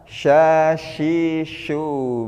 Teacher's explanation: pengucapan huruf yang disertai menyebarnya angin di dalam mulut. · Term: tafashi